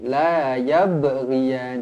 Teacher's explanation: Huruf ba qalqalah sughra dibaca melantun.